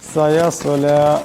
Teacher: এখানে সোয়াদ আছে, আওয়াজটা মোটা করে পড়তে হবে।